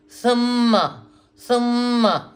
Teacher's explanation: سما سما, سا نرمی سے, اور میم پہ شد ہے تو تھوڑا رکیں گے. سما کی آواز آئے گی, ہونٹ آپس میں جڑیں گے